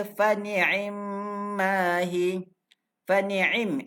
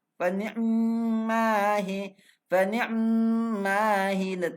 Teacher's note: Bacaan secara ikhtilas melafazkan sebahagian daripada kasrah pada ain.